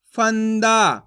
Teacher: वो इसलिए कहते हैं क्योंकि इसका उच्चारण नाक से निकलता है आप जैसे अन की मात्रा का उच्चारण करोगे तो नाक से इसका उच्चारण निकलेगा इसलिए आपको इसी तरीके से पढ़ना है कैसे फ म अनुस्वार · हैं अन की मात्रा को अनुस्वार की मात्रा भी कहते हैं वो इसलिए कहते हैं क्योंकि इसका उच्चारण नाक से निकलता है